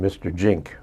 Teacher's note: the Z sound is not something comfortable for Saipanese to say. So it comes out like a J.